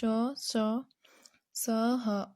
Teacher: इनका उच्चारण करते समय मुख से गर्म श्वास निकलती है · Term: ऊष्म व्यंजन